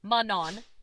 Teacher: where the n is nasalized typical of French pronunciation